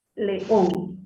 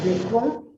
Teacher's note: Entonces, hacemos mayor fuerza de voz en esta on. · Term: sílaba tónica